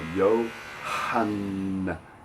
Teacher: And then you have the hard H, yo, with the long vowel. Yohanna. And that N is doubled, so it's Yohanna.